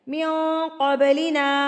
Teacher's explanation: قب پہ آپ قلقلہ کر کے اس کو ہلا کے پڑھیں گے